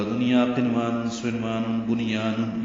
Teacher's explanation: نون ساکن کے بعد یا آنے کی وجہ سے اظہار مطلق ہے